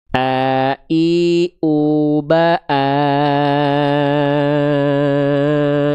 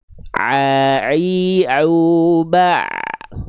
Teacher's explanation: hamzah itu dilafalkan dari tenggorokan paling bawah